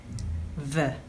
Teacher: This is a Lenis Labial Dental Fricative.